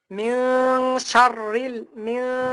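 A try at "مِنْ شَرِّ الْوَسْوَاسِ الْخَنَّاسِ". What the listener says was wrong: শা উচ্চারণটা স একদম খুব স্পষ্ট ভাবে বলতে হবে। শা শা এভাবে সা বলা যাবে না, বলতে হবে শা।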